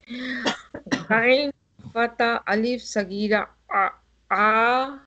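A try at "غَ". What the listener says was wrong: Don't start with a. No, it's ga.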